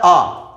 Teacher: आ स्वर को हम बोलते हैं हमारा मुंह क्या होता है, पूरा खुल जाता है। अब पूरा खुलेगा उसको क्या कहोगे, विवृत स्वर कहोगे।